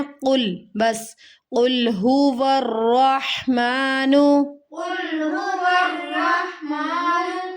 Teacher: قل لام کی آواز کو تھوڑا سا ہلا کر پڑھا ہے. لام کی آواز کو نہیں ہلانا، قلقلہ نہیں کرنا.